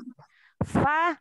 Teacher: huruf fa tadi memakai bibir yang basah ya. Fa fa bertemu dengan gigi dua, seri gigi ya.